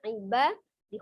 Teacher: huruf ba ada ba fathah kemudian bertemu dengan alif, maka ba-nya dibaca 2 harokat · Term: maqtabi'i alif